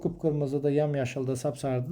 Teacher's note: qıpqırmızıdır, yamyaşıldır, sapsarıdır da vurğu birinci hecədə olur